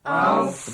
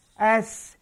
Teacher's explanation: Itbaq makna melekap lidah ni ke langit keras di atas.